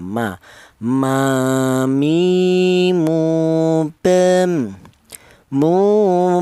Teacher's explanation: Untuk huruf mem keluarnya huruf berasal dari kedua bibir yang rapat